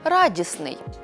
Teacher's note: дослідити це явище наприклад утворимо прикметник від слова радість виходить радісний важко вимовити розташовані підряд три приголосні звуки тому в цьому слові відбудеться спрощення і середній звук випаде